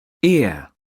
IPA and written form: ɪə (ear)